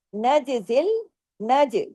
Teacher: जीम पे देखिए कलकला हो रहा है। क्योंकि जीम जज्म की हालत में है। और कुतुब जद के जो पांच हरूफ है जब भी ये जज्म की हालत में होंगे कलकला होगा।